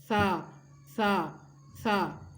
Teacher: زبان کی نوک اور سامنے والے جو اوپر کے دو دانت ہیں ان کے سرے سے لگتی ہے، کناروں سے لگتی ہے زبان